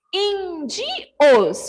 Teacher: a antepenúltima, que é in, porque tem o acento agudo, ela é a mais forte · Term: proparoxítona